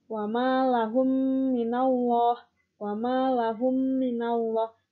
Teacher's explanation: cara membacanya adalah seperti menyuarakan mim rangkap atau ditasydidkan dan wajib dibaca dengung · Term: idgham mimi